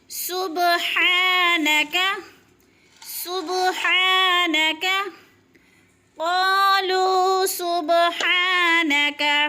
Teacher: قالو سبحانک، صبح پہ قلقلہ ہو رہا ہے، با کو ہلا کر پڑھنا ہے۔ صبح، سین کو سیٹی کی آواز سے، ہا حلق سے باریک ہے